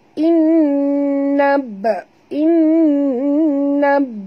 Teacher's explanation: ba ni mati di tengah-tengah kalimah, kita kena lantunkan dia